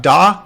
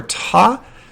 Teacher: It's the same on both of these for the ah part, the vowel part, but for the formant transition and for the consonant part, the d versus the t sound, the biggest difference between these is what's called the voice onset time